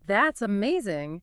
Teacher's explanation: I stretch that middle syllable, that signals peak enthusiasm.